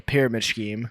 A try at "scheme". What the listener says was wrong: Scheme. You said you pronounced the H. It's a kind of a silent H. I think it's scheme.